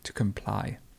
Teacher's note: There's compliance, and to comply, the stress moves to the end